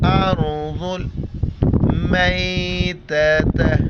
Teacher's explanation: را ساکن ہے، را سے پہلے حمزہ پر زبر ہے، را کو موٹا کر کے پڑھیں گے